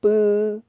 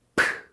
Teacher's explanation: 비읍은 부드러운 소리. 브. 피읍은 강한 소리. 프 이렇게 공기의 나가는 양이 다르다는 걸 기억하세요.